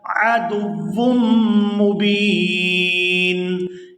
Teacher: وقف کی صورت میں نون جو ہے یہ ساکن ہو جائے گا